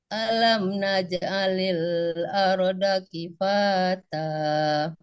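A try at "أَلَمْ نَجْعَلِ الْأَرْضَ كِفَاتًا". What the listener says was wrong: Nah, itu turun. Nah, ya, datar dulu. Alam naj'alil arda kifata.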